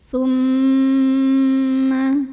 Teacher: Maka cara membunyikan mim ini adalah didengungkan dulu. Tahan kurang lebih 2 harokat sampai ada getaran halus ke hidung. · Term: gunnah musyaddadah